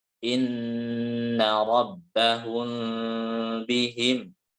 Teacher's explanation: Terus yang selanjutnya itu di ayat ke-11 yang terakhir itu ada nun berharokat tasydid, itu harusnya ditahan 2 harokat ya. Dan juga ada mim sukun bertemu ba ya. Ada ikhfa safawi ya, berharokat 2 harokat juga sama ya cara bacanya.